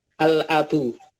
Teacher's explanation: Di sini kan ada ada alif, kemudian ada lam, ada hamzah dan ada ba. Nah, lamnya di sini harokatnya sukun dan lamnya terbaca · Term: alif lam qamariyah